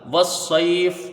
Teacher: لام تعریف کا یہاں پر ادغام شمسی ہوگا. صاد کو یا سے ملا کے جلدی پڑھا جائے گا، یہاں یا پر سکون ہے اور یا ساکن سے پہلے زبر ہے تو یہاں یا لین ہوگی · فا یہاں پر وہ حالت وقف ساکن ہے تو یہاں مد لین عارض ہوگا